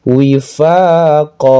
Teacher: Wifaqo, panjang lagi 2 harokat, namanya mad iwad.